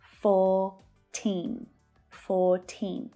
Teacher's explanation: So again, we've got the unvoiced F sound, F, and the consonant sound, Th. So in my Australian accent, the R is silent. In American accents, you'll hear that R.